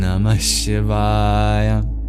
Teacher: And finally, the vowels o and a, these are long. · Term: double length